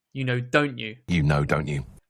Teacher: When people are speaking quickly, they might use a lot of glottal T's.